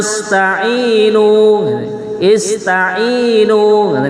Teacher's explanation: Ainnya itu setelah ain ada ya dan ainnya berharokat kasroh. Begitu juga dikatakan mat tobi'i ya, dua harokat ya.